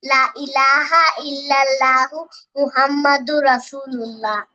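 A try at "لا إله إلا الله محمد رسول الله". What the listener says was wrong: আর একটু সুন্দর করে বলতে হবে, লা ইলাহা, একটু টান টান দিতে হবে, বলো তো, লা ইলাহা ইল্লাল্লাহু মুহাম্মাদুর রাসূলুল্লাহ।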